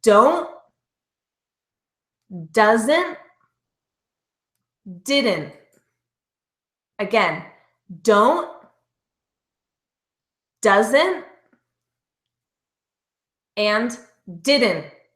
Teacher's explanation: notice the tongue staying up and not releasing for that t. So as we link it together in sentences, it might change slightly, but you're still not going to pronounce that ending T.